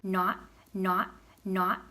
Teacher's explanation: If they say it with an aw, that's not a lot of pots. That's Boston.